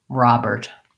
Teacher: first syllable stress and it sounds like ah and then we have the er plus a t